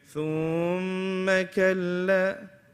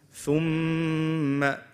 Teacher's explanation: You join it together and then put emphasis on the meme.